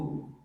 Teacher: min dunihi aliha ditekan situ jangan min dunihi min butuh dengung di situ ikhfa disertai dengan ghunah